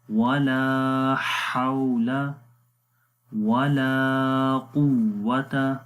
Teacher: پیش، وغفار الذنوب ولا حول، ہا کے بعد واو لین ہے، واو کے اوپر جزم ہے اور اس سے پہلے زبر ہے، تو یہاں پر نرم پڑھیں گے